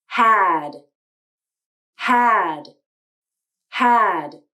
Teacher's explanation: had had notice that the d in had was released meaning the tongue tip came up to the alveolar ridge to make the d sound and then the tongue tip came down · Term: released d, released D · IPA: /d/